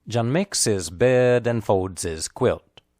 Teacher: in this phrase makes bed folds and quilt are clearly stressed the words his and a nd hand are unstressed spoken lightly